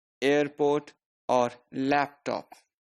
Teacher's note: the primary stress is on the first syllable in compound